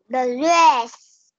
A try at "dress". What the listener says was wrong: No, don't read the dress. It's wrong. Dress. Dress. Dress.